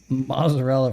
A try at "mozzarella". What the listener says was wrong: Well, you call them mozzarella. You don't pronounce the T in mozzarella. Is that what you call them, mozzarella? Is that the way it's supposed to be? I always call them mozzarella. Right, but I've never heard anybody call it mozzarella.